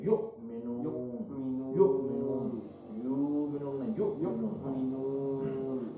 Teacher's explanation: और हमजा है वो झटके के साथ अदा होगा, जहाँ भी आएगा झटके के साथ अदा होगा।